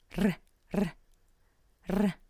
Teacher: As in rain, but it has to be rolled like in Scottish English or like in Russian